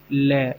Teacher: ल एक पार्श्विक ध्वनि है